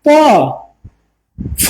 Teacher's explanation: প কম বাতাস, ফ ফ বেশি বাতাস